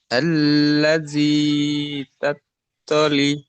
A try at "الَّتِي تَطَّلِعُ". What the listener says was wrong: আল্লাহ জি পড়ছেন, আল্লাতি পড়ুন। আইন পেশ উ, التي تطلع،